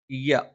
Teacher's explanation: നാവിന്റെ മധ്യഭാഗം മേലെ അണ്ണാക്കിലാണ്